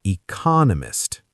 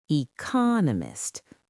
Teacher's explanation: If you use a flat rhythm, it might sound like ecoist, but the stress must be on the second syllable